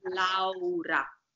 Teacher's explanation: this R is flipped between two vowels